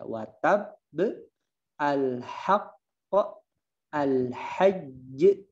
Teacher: Jadi bacanya ditekan dulu baru dipantulkan. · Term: qalqalah akbar